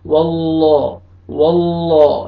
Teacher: لام سے پہلے فتحہ ہے تو آپ نے لام کو موٹا کر کے پڑھنا ہے، واللہ واللہ، لام فتحہ الف صغیرہ، لا الف مدہ کے قائم مقام ہے، آپ نے لام کو کھینچنا ہے۔